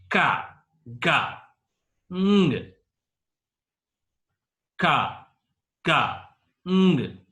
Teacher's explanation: Velar. They are produced by touching the back part of the tongue against the soft palate. Soft palate is at the roof of our mouth. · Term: velar sounds